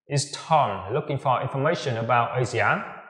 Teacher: Sử dụng ngữ điệu đi lên ở cuối câu.